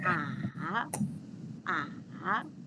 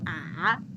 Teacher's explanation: your tone should go down and raise up